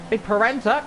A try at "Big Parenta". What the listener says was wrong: Yeah, as you forget to pronounce R's.